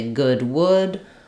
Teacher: there's no l sound in would could or should · You're working on having that lax, rounded, high back vowel, and not letting this become wood, but rather would.